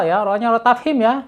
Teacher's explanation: ro-nya tafhim karena ro-nya berharokat fathah tafhim tebal.